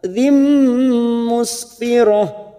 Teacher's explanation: kasrotain pada huruf dal bertemu mim idgham bi gunnah. Masuk ke huruf mim ditahan selama 3 harokat.